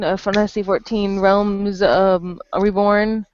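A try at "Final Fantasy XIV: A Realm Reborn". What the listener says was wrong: Nope, it's Final Fantasy 14, A Realm Reborn. No, you said Final Fantasy 14 Online Realms Reborn, not A Realm.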